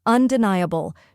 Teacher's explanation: n ye which rhymes with high or fly and carries the main stress